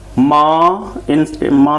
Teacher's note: इसे नून गुन्ना कहते हैं। इसमें सिर्फ नाक से आवाज़ निकालते हैं।